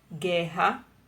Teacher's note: O fonema da vogal U não é pronunciado. As letras RR são pronunciadas uma única vez, porém de forma forte, como em rápido e enrugado, por exemplo.